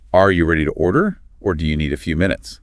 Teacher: The word or signals a choice. Notice that upward inflection on order and downward inflection on minutes.